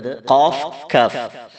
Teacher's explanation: നാവിന്റെ മുരട് നാവിന്റെ തുടക്കം നാവിന്റെ അങ്ങേയറ്റം നേരെ മുകളിലുള്ള അണ്ണാക്കിനോട് ചേർത്തുകൊണ്ടാണ് ക പറയേണ്ടത്